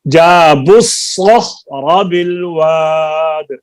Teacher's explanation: با کو صاد کے ساتھ ملنا ہے نا, جابوا الصخر, صاد کو فل کریں, فل ساؤنڈ, اس میں تفخیم پیدا کریں